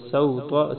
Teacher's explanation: سین کو بریک، طا کو موٹا پڑھیں گے